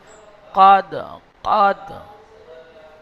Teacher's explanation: কফটাও একদম জিহ্বার শেষ থেকে উচ্চারণ হবে